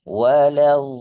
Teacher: alaiim giril magdubi alaihim waladin waladin dnya kurang panjang Di hadis ini harus dipanjangkan enam harakat. Panjangnya enam ketukan.